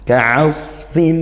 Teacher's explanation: selain didengungkan bunyinya kemudian dengung masuk ke dalam hidung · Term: idgham bighhunah